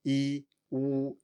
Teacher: And if you say u, you should feel that it's pretty far back. And if you transition between those two, e, u, you should feel your tongue moving back and forth. You are also rounding your lips for u, but that is not really relevant here.